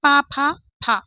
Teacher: ये फ हमारा उच्चारित होता है ओष्ठ से। लेकिन जब हम फ के नीचे बिंदी रख देते हैं तो अब ये फ नहीं है।